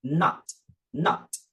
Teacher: Percebam que eu não estou falando not, né? Frisando o T, que é bem rápido, bem curto.